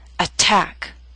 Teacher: Attack is a word with two syllables. Stress is on the second attack. So t although in the middle of the word is at the beginning of a stressed syllable.